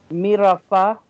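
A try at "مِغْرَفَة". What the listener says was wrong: Mig. Mim kasra ghain dakhil migrafa.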